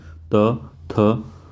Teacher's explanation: अब त कहेंगे तो जो हमारी जीभ है दांत से टकराएगी